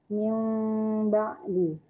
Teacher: huruf mimnya, bibirnya tidak dirapatkan, 2 bibir bertemu akan tetapi tidak ditekan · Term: iklab